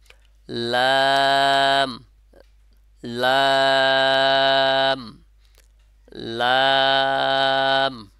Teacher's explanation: উপরে যে তালুটা আছে শক্ত অংশ, ওখানে লেগে উচ্চারণটা হবে